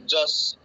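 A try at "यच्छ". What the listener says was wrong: যচ্ছ নয়, ইয়চ্ছ। জ বলে কিছু নেই, জ বলে বর্গীর জ আছে, কিন্তু ওটা যেটা আছে ওটা হচ্ছে ইয়চ্ছ। সংস্কৃতিতে ওটার উচ্চারণ ইয়চ্ছ।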